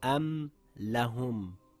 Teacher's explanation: My lips came together as should when saying the meem clearly.